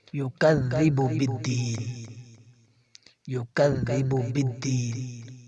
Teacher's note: کاف باریک ہے، کاف کو باریک پڑھیں گے اور آگے ذا نرم حروف ہے۔